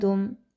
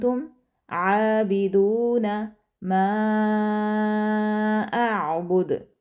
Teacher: हमारी जो ज़ुबान है वो तालु के साथ नहीं लगेगी। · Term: इख्फ़ा